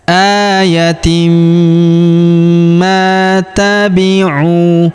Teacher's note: Kemudian huruf ma kita panjangkan dua harakat karena terdapat alif di depannya.